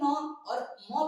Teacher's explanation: फिर न और म पढ़ते हैं तो ये हमारे नाक से निकलता है। इसलिए इसको नासिका वर्ण कहते हैं।